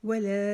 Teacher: لا کو 4 الف جتنا لمبا کھینچیں گے